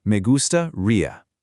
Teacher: Notice the pronunciation of the G here. It's a soft, slightly breathy G, followed by that long E sound at the end.